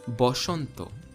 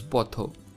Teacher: bengali similarly has schwa in it but interestingly it's not a it's o